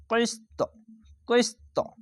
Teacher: ত অক্ষরটি কলকলা হয়ে যাবে এরকম ভাবে ধাক্কা মেরে কলকলাটি হবে কফ সিনজের কইস আর ত মিলেস্ত ত উচ্চারণটি উপরে সাউন্ড যাবে